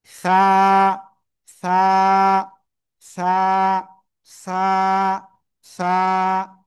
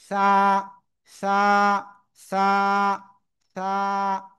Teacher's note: জিব্বার আগা, সামনের উপরে দুই দাঁতের এই আগায় লাগাবো, লাগিয়ে হালকা বাতাস বের করে উচ্চারণ করব।